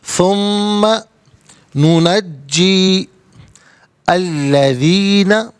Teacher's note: ثم ننجی الذین، ناظرین یہاں پر ننجی کے بعد جیم کے نیچے زیر ہے، اس کے بعد الذین میں لام ہے، تو جیم کے زیر کو لام کے ساتھ ملائیں گے، درمیان میں سے الف نی حمزہ کو حذف کریں گے.